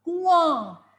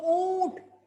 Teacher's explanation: आ में मुंह भी खुला और नाक से भी आवाज आई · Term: अनुनासिक